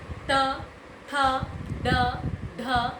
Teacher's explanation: आपकी जीभ दांतों के पीछे वाले हिस्से में टकराएगी, उसे कहा जाता है मूर्धन्य